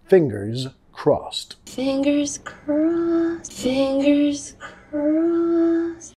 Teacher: Fingers, sonido de Z al final, fingers crossed. Crossed ed pronunciado como una T.